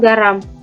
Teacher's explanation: G dengan bunyi hambat dorsovelar bersuara